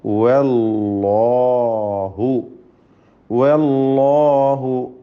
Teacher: വല്ലാഹു ഖലഖകും, വല്ലാഹു, വാവ് മുസ്തഫിലാണ്, ഇസ്തിഫാലിൻ്റെ അക്ഷരമാണ്, തർക്കീഖ് ചെയ്യണം. എന്നാൽ അല്ലാഹു എന്ന ലഫ്ദുൽ ജലാലയിലെ ലാം അതിനെ തഫ്ഖീം ചെയ്യണം. അതിൻ്റെ ദീർഘത്തിലും തഫ്ഖീമുണ്ട്.